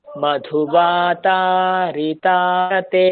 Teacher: মধুবা যেমন দীর্ঘ, তা তেমনই দীর্ঘ।